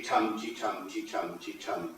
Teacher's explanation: Stress-timed rhythm is what I'm using now, the tum-ti-tum-ti-tum-ti-tum sort of rhythm.